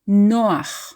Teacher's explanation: to pronounce it like a native Hebrew speaker we stress the second from last syllable Noah it's not Noah stressing the last syllable